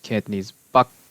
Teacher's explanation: Middle Chinese had that K, which is preserved in Cantonese Bak